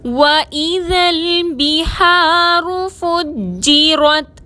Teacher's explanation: وَإِذَا الْبِحَارُ میں با کی زیر کو باریک پڑھیں گے، ہا کو حلق سے ادا کریں گے، الف مدہ ہے، 2 حرکت کے برابر کھینچ کر پڑھیں گے، را پر پیش ہے، را کو موٹا پڑھیں گے، جیم مشدد کو مضبوطی اور دباؤ کے ساتھ ادا کریں گے، را کو تا سے ملائیں گے۔